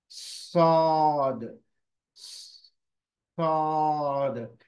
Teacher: ये सीन की आवाज नहीं है, साद नहीं है, बल्कि ये हुरूफ सौद है, और ये मोटा हुरूफ है। मोटे हुरूफ की पहचान क्या है, जबान का जो पिछला हिस्सा है वो ऊपर की तरफ उठ रहा है, और जबान की नोक जो है, ये जो नोक है वो सीन का ही मखरज, यानी नीचे की तरफ, नीचे के दांतों के अंदरूनी हिस्से में, मसोड़ों पर, नीचे के मसोड़ों पर लग रही है।